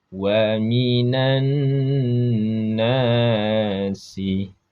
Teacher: dibaca dengan dengung pada nun dan mim ketika bertasydid. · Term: ghunah